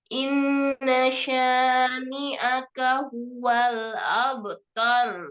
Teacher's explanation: Roknya ditebalkan ya, karena sebelum rok sukun ini fathah ya.